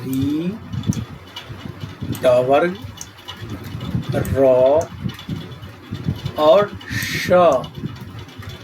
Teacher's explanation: मूर्धन्य, मूर्धन्य वर्ण। तो मूर्धा से उच्चरित होने वाले जो वर्ण है वह है री, ट वर्ग, र और श। इसे हम मूर्धन्य श भी पढ़ते हैं।